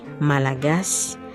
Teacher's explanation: In Malagasy, we don't punch the last vowel of a word. Instead, it's almost dropped or whispered like a soft breath of air. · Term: whisper rule